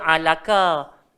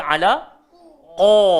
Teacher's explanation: Tak bolehlah kita baca alaka. Kena baca ala qa. Gemuk qa.